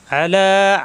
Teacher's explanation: আ কণ্ঠনালীতে চাপ দিয়ে লা একালিপ টান